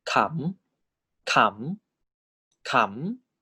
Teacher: That's why they are all live syllables. So live syllable and high class default tone is tone 4.